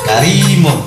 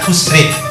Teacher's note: Kemudian roh dibaca tipis apabila roh satu dibaca kasroh, ri.